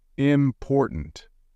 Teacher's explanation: in the word important you stress the second syllable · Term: word stress